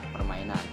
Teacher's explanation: penekanan pada suku kata tertentu dalam kata permainan stres bisa jatuh pada kata main